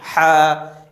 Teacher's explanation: মাখরাজটি হচ্ছে হলকের মধ্যখান হইতে